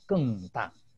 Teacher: it's supposed to be a falling tone, supposedly from almost the top of your pitch, okay, of the voice down to the lowest possible level